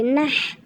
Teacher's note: বড় হাটা উচ্চারণ করতে হবে হলকের মাঝখান থেকে বাতাস বের করে। না লাগবে হার সাথে নাহ, না লাগবে হার সাথে নাহ।